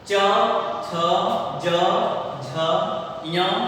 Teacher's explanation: च वर्ग का उच्चारण स्थान तालु, जीभ का ऊपरी हिस्सा ऊपर के हिस्से में टच होता है।